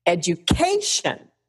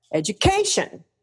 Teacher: It's always the syllable right before the shun that goes high. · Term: accented syllable